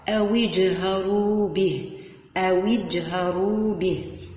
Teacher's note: إذا نقلت حركة الهمزة إلى الحرف الساكن ما قبلها، وتحذف الهمزة وتقرأ أو اجهروا به، مع قلقلة حرف الجيم وتفخيم حرف الراء